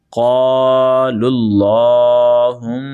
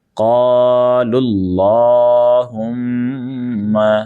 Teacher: قاف حروف مستعلیہ ہے، موٹا کرنا ہے، ساتھ میں الف بھی موٹا ہو جائے گا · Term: موٹا پڑھنا